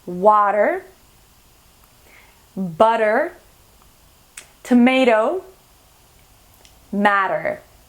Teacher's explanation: So these are just 4 examples of words with T in the middle of two vowels. And so the T changes to a D sound.